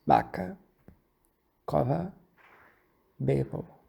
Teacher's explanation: todas as consoantes intervocálicas sonoras, que é todas elas viram fricativas, assim como no português europeu